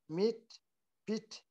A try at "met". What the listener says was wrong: Met. Met. Eh. Not meet. Met.